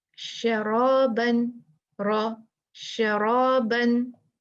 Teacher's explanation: तो रा पर अगर ज़बर पेश हुई तो क्या होगा? मुफ़ख्ख़म मोटा पुर पढ़ देंगे रा को